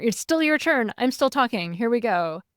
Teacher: a lot of the online TikTok accent utilizes uptalk at the end of everything. So it sounds like you're not finished.